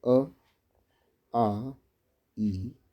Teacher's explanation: जिन स्वरों के उच्चारण में हवा केवल मुंह से निकलती है उन्हें निर्नुनासिक अर्थात मौखिक स्वर कहते हैं